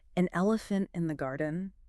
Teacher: so an elephant links smoothly with that n Sound acting as a connector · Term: linking